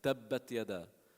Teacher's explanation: When you give it a shadda, it's almost like a pause in the sound.